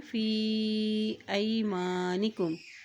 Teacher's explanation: फ़ा के ऊपर मद है तो यहाँ इसको हम लंबा अदा करेंगे